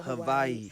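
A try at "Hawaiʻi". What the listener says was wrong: You may or may not know, Hawaii is actually not pronounced Hawaii. It's the W is a V. It's pronounced as a V, so it's Hawaii.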